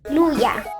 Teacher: Noi altri a Verona le L le pronunciamo belle piene.